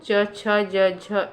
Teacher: ये तालु से बोले जाते हैं, तालव्य व्यंजन है। इसका सूत्र है इचु यशा नाम तालु।